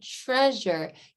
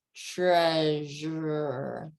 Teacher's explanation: Or if you look at the word treasure, with the word treasure, you have both help from the beginning sound before the R and the sound right after the R, because you have those palatal sounds to help with the R sound. So you're saying, you're up there on the palate, treasure.